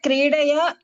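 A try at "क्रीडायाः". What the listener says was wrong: క్రీడాయాః మీరు ఎందుకు దీర్ఘాలు మిస్ అవుతున్నారు? ఎందుకు విద్యయాః అంటున్నారు, క్రీడయాః అంటున్నారు? విద్యాయాః క్రీడాయాః రమాయాః లాగా. క్రీడయాః కాదు, క్రీడాయాః. క్రీడాయాః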